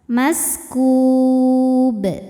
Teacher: Sebab huruf qalqalah yaitu ba, sukunnya bukan sukun asli melainkan sukun karena berhenti. Cara bacanya dipantulkan dengan pantulan yang besar. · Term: qalqalah kubro